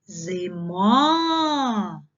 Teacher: ненаголошений звук и вимовляємо з наближенням до звуку е